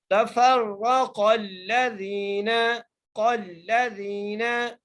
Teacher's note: जाल के साथ जाय मद्दा है, जाल को एक अलिफ की मदार खींच के पढ़ेंगे